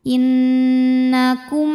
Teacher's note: Cara bacanya berdengung, tahan dengungannya kurang lebih 2 harokat. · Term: gunnah musyaddadah